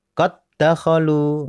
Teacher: jadi masuk ke dal, huruf dal berikutnya seperti di tasdid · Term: idgham mutamatsilain